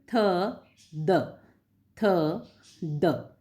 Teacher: तो थ और द को बोलने पर जो आपके जीभ के जो बाहरी हिस्से का जो किनारा है वो ऊपर के दांतों के पिछले भाग अर्थात यानी बैक ऑफ टीथ अर्थात ऊपरी हिस्से को टच करना चाहिए, तब आपका जो उच्चारण निकलता है उसमें थ और द है। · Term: डेंटल